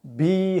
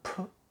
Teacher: V와 B는 유성음입니다. F와 P는 무성음입니다.